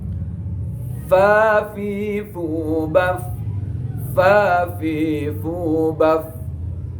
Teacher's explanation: Ujung gigi nempel pada bibir bawah yang dalam itu. Itu namanya huruf fa.